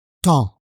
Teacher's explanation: on ne prononce pas le P dans le mot temps, ni le S. Donc, on prononce temps. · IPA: tɑ̃, [tɑ̃]